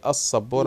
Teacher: الصورة الرابعة الخلط بين آل الشمسية والقمرية. طبعا آل الشمسية زي السبورة مش بنطق اللام تبقى شمسية